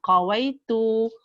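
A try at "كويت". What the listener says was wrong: Kaf kecil. Kawai itu.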